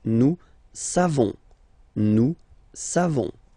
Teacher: So classic ending for nous, O-N-S. You don't pronounce the final S.